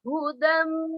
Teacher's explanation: Itu namanya hukum idgham bi gunnah. Hudan mim dibaca hudam, masuk dengan suara dengung